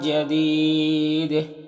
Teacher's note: خا اور قاف دونوں حروف مستعلیہ میں سے پر پڑھیں گے، اور اس تنوین کے بعد جی میں حروف اخفا میں سے تو اخفا ہوگا، اور جدید میں وقف کریں گے تو دال میں قلقلہ ہوگا